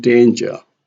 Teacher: Danger here has a primary stress on day